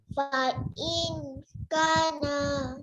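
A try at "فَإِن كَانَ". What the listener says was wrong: Ka panjang sayang. Fa'in kana.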